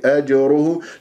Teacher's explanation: الجيم المقلقله قلقله الصغرى في كلمه اجره · الجيم مقلقلة قلقلة صغرى في كلمة أج أج أجره، لا تقول أجره، لا تطل الوقوف على المخرج، راح تروح منك القلقلة، ما قلقلة هذه، رأسا تضرب المخرج السريع.